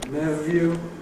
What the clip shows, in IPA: ˈnevjuː